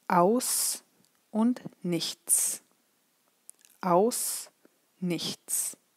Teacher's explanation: There is no voice behind the s. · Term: voiceless